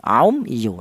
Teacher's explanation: Yang benar mem mati ini dibaca jelas · Syafawi itu artinya bahwa huruf mim ini keluarnya berasal dari bibir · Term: idhar syafawi